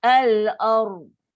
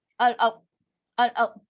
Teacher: Ra ada bunyi takrir. Dan dia pun ra, dia bersifat tafkim tebal.